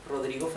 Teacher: it's a sound of the vibration of the tongue near your your front teeth